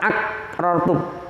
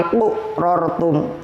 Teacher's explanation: Tidak boleh membaca ak rortum. Harus ada pantulannya bunyi huruf qaf. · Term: qalqalah sughra